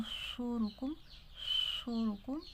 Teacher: स्वाद में सिटी की साउंड है तो स्वाद में सिटी की साउंड निकालनी है जैसे इ या सुरुकुम सुरुकुम इस तरह आवाज़ आएगी लफज़ अला · اب صاد میں سیٹی کی ساؤنڈ ہے تو صاد میں سیٹی کی ساؤنڈ نکالنی ہے